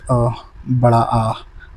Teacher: जब आप आ बोलोगे तो आपका जो ओठ है उनकी आकृति अंडाकार हो जाएगी, जबकि गोलाकार नहीं रहेगी। तो इसलिए अवृत्तामुखी कहा जाता है।